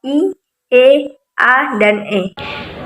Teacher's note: Yang ketiga yaitu vokal tak bulat atau yang biasa disebut dengan unround vowels, yaitu vokal yang diucapkan dengan bentuk bibir tidak bulat atau terbentang lebar